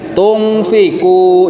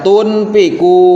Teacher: nun sukun itu samar suaranya